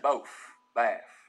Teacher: You also get F for final TH sounds here.